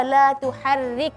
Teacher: Yang pertama ketika membaca la tuharrik, ra kasrah tipis.